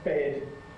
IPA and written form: bed (bed)